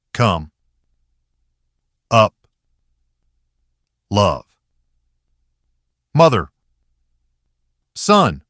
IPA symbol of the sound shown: ʌ